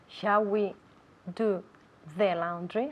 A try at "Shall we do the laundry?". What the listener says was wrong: Shall we do the laundry? I want to see more of your tongue. Do the laundry.